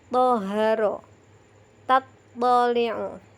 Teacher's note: bunyi huruf to diucapkan dengan suara tebal